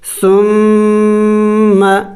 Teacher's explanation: اور میم مشدد ہے، میم مشدد پر ہمیشہ غنہ کیا جاتا ہے، تو ہم یہاں پہ غنہ بھی کریں گے. ثم یعنی ناک میں آواز لے کے جائیں گے